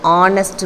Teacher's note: the H is silent so the first sound of the adjective is an O